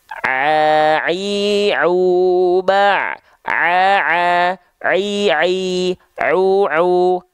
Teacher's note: huruf ain itu dilafalkan tepat dari bagian tengah tenggorokan